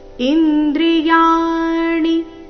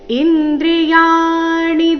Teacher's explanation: ಇಲ್ಲಿ ಯ ದೀರ್ಘ ಮತ್ತೆ ಮುಂದೆ ಣಿ ರಸ್ವ ಬರ್ಬೇಕು